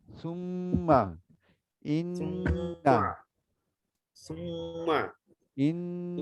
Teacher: মিম আর সেই নুনকে নাকের মধ্যে নিয়ে পড়তে হয়, যেটাকে গুন্না বলে। এই গুন্না যখন হবে তখন নাকের বাঁশি হতে করতে হবে। · সুম বলে জিভটাকে উপরে তালুতে নিয়ে যেতে হবে, তাহলে নাকের ভিতর চলে যাবে